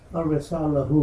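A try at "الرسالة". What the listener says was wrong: No, this is ta. at the end. al-risala. Kataba al-ibnu al-risalata.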